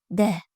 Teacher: To'ppa'g'ri d undosh tovush hosil boʻlish oʻrniga koʻra til oldi undoshi hosil boʻlish usuliga koʻra portlovchi, ovoz va shoquinning ishtirokiga koʻra jarangli undosh